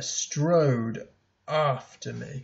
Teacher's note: And so those two syllables there, strode after me. This is a spondee, two stressed syllables.